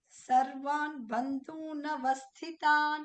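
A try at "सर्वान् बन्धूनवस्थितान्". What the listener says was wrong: Da is mahaprana, not ba.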